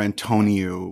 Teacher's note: in English we tend to put the stress on the middle syllable